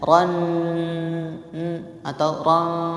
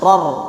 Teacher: Yaitu melebur tapi tidak dengan hidung. Jadi tidak ada bunyi di hidung. Jadi bunyinya hilang, bunyi n, ya. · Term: bila gunnah